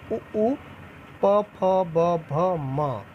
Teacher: ओष्ठ्य में देखेंगे दोनों ओठ सट जाते हैं बोलते समय